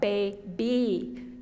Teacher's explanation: Now my tongue has to move from the A to the E sound, so it's much harder.